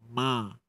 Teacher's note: bila kita sebut mim ni memang melibatkan hidung kan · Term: dengung